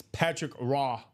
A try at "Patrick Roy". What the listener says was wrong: Patrick Waugh. It's not Raw, isn't it? It's Patrick Waugh. It's like a Waugh. Yeah, but I think the hard, like you don't go hard on Patrick Raw. Yeah, it's Patrick Waugh. It's more like a Waugh, like a W sound. Waugh.